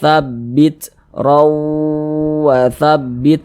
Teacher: jangan tapi dibaca RW dia langsung masuk ke huruf wau kemudian dia digunahkan atau didengungkan jadi suaranya itu kita tahan kita panjangkan sejenak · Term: idgham bighhunah